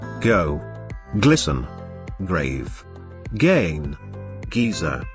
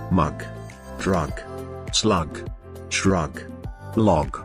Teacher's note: break and plaque the sound is a voiced feel uplosive sound it is voiced because it is produced with the vibration of the vocal cords which makes it prominent in articulation even though it is a